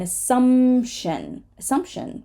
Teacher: if a p ends up in the middle we will often just skip it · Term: silent P